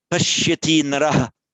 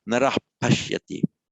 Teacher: So if you reverse the order of the words, pashyati naraha, that shadow ah, whereas if the visarga is followed by another word, just a rasping H